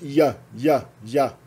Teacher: o J representa a palatal aproximante